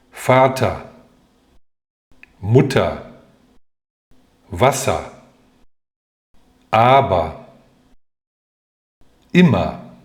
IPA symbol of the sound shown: ɐ